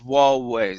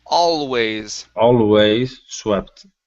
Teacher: your tongue has to move up and touch the top of your mouth with the l if you don't do that then it sounds wallways it sounds